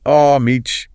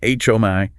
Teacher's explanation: Some Americans might drop the H sound.